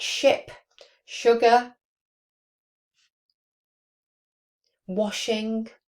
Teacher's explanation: it's a voiceless post-alveolar fricative. That's a sh sound on words like ship, sugar, washing.